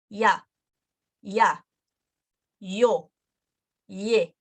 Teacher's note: it's not going to be ia, where both of them are the same length, but it's going to be one short, one long.